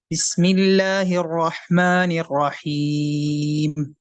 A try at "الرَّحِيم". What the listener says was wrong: نررحیم، آپ کے نا را کے مجھے تلفظ شاید ایسا محسوس ہو رہا ہے کہ نررحیم میں آپ را میں جو ہے نا وہ ہونٹوں کو گول کر رہے ہیں.